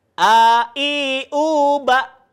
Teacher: Kalau huruf alif atau hamzah itu dia tempat keluarnya berada di pangkal tenggorokan, ya. Sama seperti huruf H.